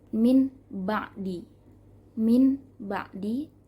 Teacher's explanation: Masuk ke hukum yang ketiga, yaitu hukum iqlab. Artinya membalikkan bunyi nun sukun menjadi mim. Sebelum masuk ke ba ya.